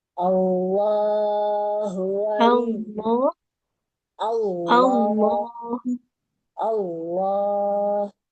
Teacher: A langsung L tidak ada bunyi wunnya.